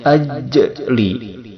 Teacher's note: jim ini mempunyai sifat syiddah, yaitu ditekan ketika membacanya